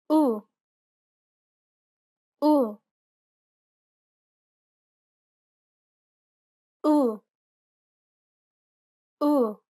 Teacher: It's identical to the U in put. Be sure to pronounce it nice and short.